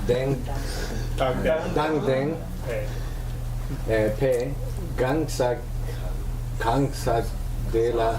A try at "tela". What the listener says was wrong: Not a D. Not a D. Tela.